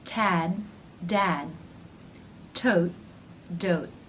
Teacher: The last two word pairs ended with T's and D's. Did you notice that I did not release them?